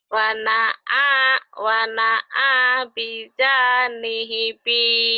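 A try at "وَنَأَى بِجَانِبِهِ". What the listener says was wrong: terbalik bijani bihi terbalik. Wana wana bihi wana bijani bihi.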